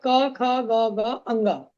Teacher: कंठ वर्ण, इनका उच्चारण कंठ से होता है